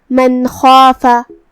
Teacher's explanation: کلمت خافا میں حرف الخا کی ادائیگی حلق کے اوپر والے حصے سے ہے · تو ہم یہاں نون ساکن کو ظاہر کریں گے اور بغیر غنہ سے یہ حکم کو ادا کریں گے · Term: اظہار